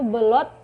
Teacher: kata U diucapkan menjadi O. Yang pertama yang kata yang salah itu belot menjadi belut.